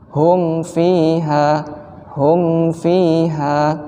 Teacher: ketika kita merapatkan bibir ini maka ada aliran udara yang mengalir di rongga hidung. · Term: izhar syafawi